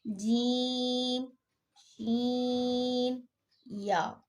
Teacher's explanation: جب زبان کا درمیانی حصہ تالو سے لگتا ہے تو اس سے یہ 3 حروف ادا ہوتے ہیں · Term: حروف شجریہ